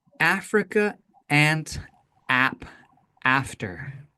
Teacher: low and in the front, ah, not ah, but ah, all right?